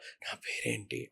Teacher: దానివల్ల వాళ్ళకి voice normal గా ఉండదు బ్రీతి వాయిస్ ఉంటది చాలా ఇట్లా నా పేరేంటి అట్లా ఉంటది వాళ్ళ వాయిస్ ఓకే అంటే కొంచెం గురక సౌండ్ వస్తూ ఉంటది గురక కాదు కానీ బ్రీతి అంటే ఎయిర్ ఎయిర్ వచ్చేస్తూఉంటది